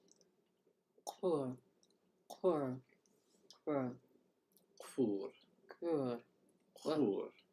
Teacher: I'm adding a slight trill and tap where there should not be one.